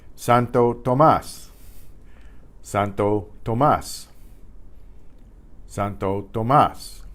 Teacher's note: Now you hear that stress in the mas part of San Tomas. That tells you there's an accent on that A.